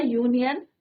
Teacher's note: तो यू का प्रोनाउंसिएशन कैसा हो रहा है, एक लॉन्ग यू की तरह हो रहा है